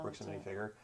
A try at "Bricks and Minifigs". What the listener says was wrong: You said figure twice. It's not Bricks and Minifig? I've always thought it was Bricks and Minifigs. Well, yeah, but who says minifigures?